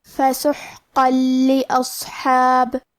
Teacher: ہم یہ تنوین کو لام میں ملا کے بغیر غنہ سے لیکن تشدید کے ساتھ یہ حکم کو ادا کریں گے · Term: ادغام بغیر غنہ